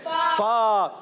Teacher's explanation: और दांतों के ऊपर के दांतों के किनारे जब निचले वाले होंठ के तर हिस्से से लगते हैं तो अदा होता है फा